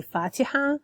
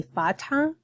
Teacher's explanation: But if it was written and not specific to the Quran chapter, I would say Fatha. So I would eliminate the E sound between the T and the H.